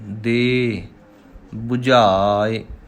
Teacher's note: ਦੇ ਨਹੀਂ ਕਹਿਣਾ, ਦੇ ਦੱਦੇ ਨੂੰ ਲਾਂ ਲੰਬੀ ਕਰਨੀ ਹੈ, ਈੜੀ ਨੂੰ ਸਿਹਾਰੀ ਛੋਟੀ ਰੱਖਣੀ ਹੈ।